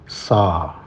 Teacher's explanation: isti'la berkali-kali saya sampaikan bahwa bunyi isti'la itu a, bukan o.